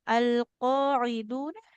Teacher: huruf ainnya dia di tengah tenggorokan jangan kayak hamzah ya Bu ya